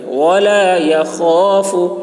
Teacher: خا کی آواز موٹی ہوگی، حلق سے ادا کریں گے. ولا يخاف عق، عین کو حلق سے، قاف میں قلقلہ.